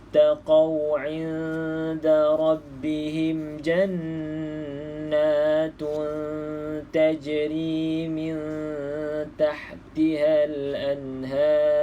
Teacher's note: pastikan tebal sebab sebelum ra adalah huruf yang berbaris di atas. Kena ra ni kena baca tebal lah